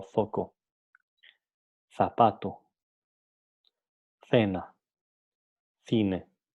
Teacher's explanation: El fonema C se caracteriza en general como un fonema interdental fricativo sordo. Es interdental porque a la hora de pronunciar, la lengua se pone entre una posición entre los dientes inferiores y los dientes superiores. C. Es fricativo porque no impide el flujo del aire de manera completa y es sordo porque la sonorización, la vibración de las cuerdas vocales ocurren después de hablar, después de pronunciar.